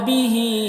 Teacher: مد منفصل ہے، اسے 3-4 الف کے برابر کھینچتے ہیں